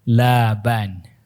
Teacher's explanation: Nama pamannya Laban, dibaca panjang lamnya, bukan pendek. Kalau pendek susu jadinya.